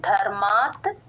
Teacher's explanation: ధ కి మహాప్రాణం ఉందండి గమనించండి